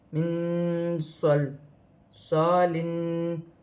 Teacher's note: نون ساکن میں بھی اخفا ہوگا کیونکہ آگے صاد حرف اخفا میں سے ہے ، من صل صالن، یہاں پر الف مدہ بھی بن رہا